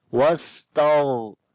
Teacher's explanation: کو پھر پڑھیں گے وستغفر، اور فا کے بعد را ہے، را کو باریک پڑھیں گے کیونکہ را کے اوپر جزم ہے اور اس سے پہلے زیر ہے ، تو جب را کے اوپر جزم ہو اور اس